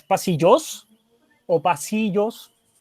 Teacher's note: Entonces el sí es la sílaba tónica, la segunda sílaba, o la penúltima en este caso.